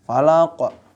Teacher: Falaq, qalqalah kubra, jelas. Ya, pantulannya lebih gede gitu.